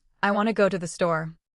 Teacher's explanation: Want and store receive main stress.